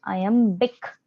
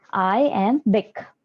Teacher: अब इंग्लिश के अंदर ये वर्ड जो है iambic, उसको बोला जाता है कि ये इस तरह का फुट है जहां पर एक अनस्ट्रेस्ड सिलेबल यानी कि जोर नहीं दिया गया एक सिलेबल और उसके बाद में एक स्ट्रेस्ड सिलेबल है